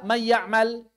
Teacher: bunyi oralnya adalah ya, bunyi nasalnya adalah nun